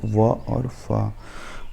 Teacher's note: इन अक्षरों के प्रयोग में ऊपर के दांत और नीचे के ओठ का प्रयोग होता है